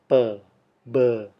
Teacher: kita ciptakan dengan menahan udara di balik bibir dan kemudian melepaskannya